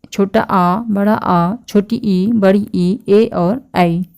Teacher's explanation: एक है अवृत्तमुखी और दूसरा वृत्तमुखी। तो अवृत्तमुखी इनके उच्चारण में ओठ गोलाकार नहीं होता है, ओठ गोल नहीं होगा तो वह अवृत्त होगा।